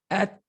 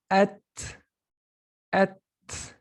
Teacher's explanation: when you say at, you're releasing air from between your upper teeth